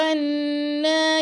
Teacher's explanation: نون پہ آپ نے غنہ کرنا ہے، اور نون کے اوپر کھڑا زبر ہے تو 2 سیکنڈ تک اس کو لمبا کریں گے۔